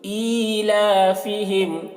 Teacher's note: ای کو کھینچیں گے، کھڑا زیر ہے، تو ایلافہم ہا کو حلق سے ادا کریں گے